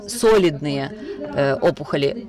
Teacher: which is not typical. The stress on the first syllable in the word solidny is not typical for Russian, but still we have to be correct about that.